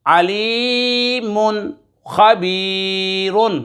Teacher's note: تنوین کے بعد خا حروف حلقی میں سے آ رہا ہے، اظہار ہوگا، غنہ نہیں کریں گے